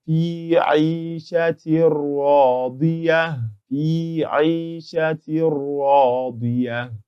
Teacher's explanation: the Nuun Saakinah has been entered completely into this Ra, because Ra is a letter of Al-Idgham bighayri gunnah, and for such letters we do not observe idgham with gunnah.